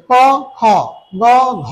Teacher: প্রথম এবং তৃতীয় এটা হচ্ছে অল্প প্রাণ এবং দ্বিতীয় চতুর্থ যে বর্ণগুলো এগুলো হচ্ছে মহাপ্রাণ । মানে বেশি সময় ধরে আমাদের প্রাণ থাকে বা শ্বাস থাকে। · ক এ উচ্চারণের সময় প্রাণ কিন্তু অল্প সময়, বাট খ এর সময় কি বেশি সময় শ্বাস নেওয়া যাচ্ছে